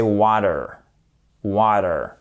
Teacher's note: I'd like some water, water, water en British English et en American English, c'est water, water. Le T, il devient presque comme un D